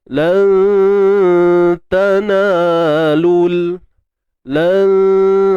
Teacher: Ikhfa haqiqi. Jadi nun mati bertemu ta dan huruf ta huruf yang nipis, maka dengung kita turut nipis. Dan kalau cerita martabat, ianya berada pada martabat a'la, martabat tertinggi.